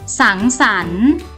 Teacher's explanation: อ่านออกเสียงเหมือนประสมเสียงอ่ะอ่ะและมีเสียงตัวสะกดในมาตรากน